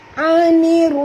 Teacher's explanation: kena masukkan bunyi nun ini terus ke dalam ra tanpa membunyikan alif lam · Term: alif lam syamsiah